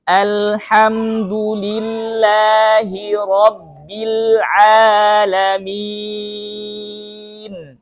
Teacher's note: terkadang banyak orang yang membaca Ain itu sampai ke hidung padahal Ain itu bukan huruf hidung tapi tenggorokan Tengah